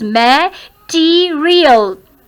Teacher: Second syllable is to be stressed.